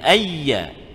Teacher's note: Dia masukkan bunyi nun ke dalam ya tu. Tapi tanpa dengung. Dia meninggalkan dengung.